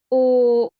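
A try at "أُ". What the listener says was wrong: Karena dia nutupnya terlalu kuat ya. Ketika menutup berhenti itu terlalu kuat, akhirnya pita suaranya tertutup. Jadi jangan terlalu kuat ya. Mendorongnya jangan terlalu kuat.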